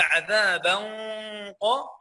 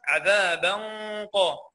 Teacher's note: عندي التنوين مفخم، لان الغنه تتبع ما بعدها تفخيما وترقيقا